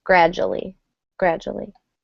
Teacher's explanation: I guess one pronunciation note is that the D and U kind of almost make a J sound, gradually. You really don't hear a oo or a U sound. You hear more of a J straight to the ending